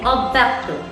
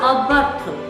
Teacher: তাহলে অ কিন্তু বিবৃত রূপে অর্থাৎ অরূপে উচ্চারিত হবে